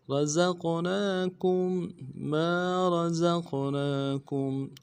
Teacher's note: کے اوپر کھڑا زبر ہے ایک الف دال میں کھینچیں گے کاف کو میم ساکن کے ساتھ ملانا ہے میم ساکن میں غنہ کریں گے